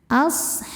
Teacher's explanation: Dan ketika berhenti ada juga hukum qalqalah kubro, karena ada huruf qalqalah yaitu ba yang sukunnya karena berhenti atau disukunkan ya. Maka dibacanya ba ini memantul dengan pantulan yang lebih berkumandang, pantulan yang besar.